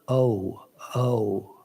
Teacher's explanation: and italian o is a pure vowel it's just o but in english and in sanskrit it's considered to be a diphthong that means that during the pronunciation of the vowel the position of the mouth changes